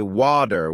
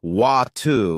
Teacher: In American English, people might say water with a d sound, while in British English, it's often wu with a t sound.